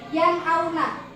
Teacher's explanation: Jadi di sini ada nun mati bertemu dengan hamzah. Jadi itu dinamakan izhar. Harus dibaca terang. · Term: idhar